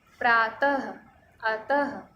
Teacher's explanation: विसर्ग का जो उच्चारण होता है वो ह की तरह होता है।